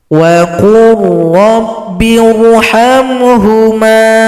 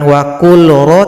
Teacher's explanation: lam tidak dibaca lagi karena telah gabung atau idgham pada huruf ra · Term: idgham mutaqaribain